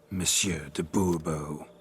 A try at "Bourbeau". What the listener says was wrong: The emphasis falls on the last syllable. Bourbeau?